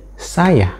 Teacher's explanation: bahwa ada bunyi glotal fricative ha dan vokal A itu dihilangkan atau syllable yang berada di tengah-tengah itu dihilangkan kemudian menjadi saya